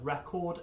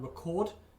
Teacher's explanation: depending if you stress the E on record or stress the O on record, they mean different things